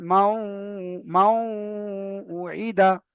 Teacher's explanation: তারপরে দেখেন এখানে নুন সাকিনের পরে ওয়াও এসেছে, তাই নুন সাকিনকে ওয়াও এর সাথে মিলিয়ে, নুন সাকিনকে ওয়াও এর সাথে মিলিয়ে একালি পরিমাণ গুণনা করে পড়তে হবে। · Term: ঈদগামে নাকিস